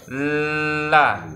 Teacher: jadi suaranya itu kalau lam ya, keluarnya itu dari sisinya ya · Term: inhiraf